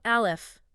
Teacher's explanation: When you say Aleph, specifically the sound of the vowel, that open breath, it starts deep down in the chest, in the throat. It is pure open air.